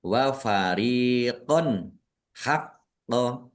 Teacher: Fathah tanwin bertemu dengan huruf ha. Bacaan izhar dibaca jelas. · Ro kasroh ya sukun juga mad thobi'i. Dibaca panjang dua harakat.